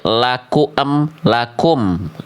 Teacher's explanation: Maka mimnya di sini nggak dibaca lakuma, lakumi, lakumu, ya, tapi mimnya dibaca jadi mati dengan bunyi konsonan em. Jadinya laku ditambah em, jadinya laku em lakum. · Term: mim sukun